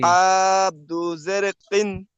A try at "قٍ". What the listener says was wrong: জি না, কাফ দু জের কিন, এটা গলার ভিতর তো আসবে না। কিন।